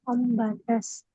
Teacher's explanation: انبتت تا کا سین میں مل گیا